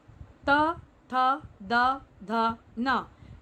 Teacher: इनका उच्चारण करते हुए देखेंगे कि हम जो वायु है वो दंत से रगड़ खाती हुई बाहर निकलती है।